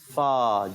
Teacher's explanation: اوپر کے دانتوں کے کنارے اور نیچے کے ہونٹ کا فا ادا کرتے ہیں